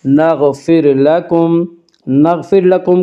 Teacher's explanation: نغفر لکم کی را کو باریک پڑھیں گے، اس کا قاعدہ ہے کہ را ساکن سے پہلے زبر پیش ہے تو را ساکن کو پر پڑھا جائے گا، را ساکن سے پہلے زیر ہے تو را ساکن کو باریک پڑھا جائے گا، یا را ساکن سے پہلے فا کے نیچے زیر ہے اس لیے را ساکن کو باریک پڑھیں گے۔